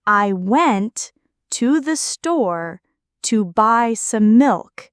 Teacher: The stressed words went, store, buy, and milk carry the main meaning. The unstressed words I, to the, to, some connect the ideas. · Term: Sentence stress and rhythm